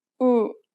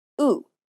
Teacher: The lips are more relaxed for the Korean ooh sound than the English ooh.